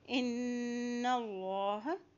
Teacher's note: نون کے پر شد ہے، غنہ ادا کریں